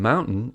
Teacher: the T in mountain is produced by blocking the glottis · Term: glottal stop